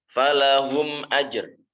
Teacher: Cara membacanya adalah dengan menyuarakan mim dengan jelas di bibir tanpa disertai dengan dengung. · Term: izhar syafawi